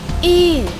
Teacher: The corner of the lips are moved away from each other